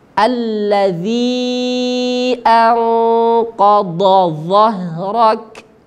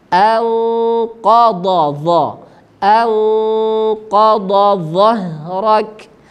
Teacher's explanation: huruf dad keluarnya dari tepi lidah menyentuh gigi geraham atas